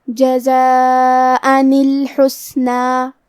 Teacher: آخری میں حمزہ کی حرکت ہے تنوین زبر، اور کیونکہ تنوین کی اصلیت نون ساکن ہے اور حرف الالف کلمت الحسنہ کی شروعات میں بھی الف ساکن ہے، اور کیونکہ قرآن میں 2 حرف ساکن ساتھ میں نہیں پڑھے جاتے، لہذا ہمیں تنوین کی اصلیت نون ساکن کو زیر سے پڑھتے ہوئے پھر کلمت الحسنہ کو پڑھنا ہے۔ جزاء الحسنہ، کلمت الحسنہ میں سین ساکن ہے، تو کیونکہ سین حروف الہمز میں سے ہے تو ہم یہ کلمہ کو ایسے پڑھیں گے الحسنہ۔